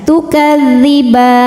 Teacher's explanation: Mad thobiinya fathah panjang pada huruf ba. Kemudian huruf yang disukunkannya nun. Maka bnya ini panjang. Boleh dua atau empat atau enam harakat. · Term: mad arid